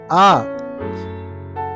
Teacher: నాలుక మధ్య భాగము. ఆ. పెదాల స్థితి తటస్థలంగా ఉన్నాయి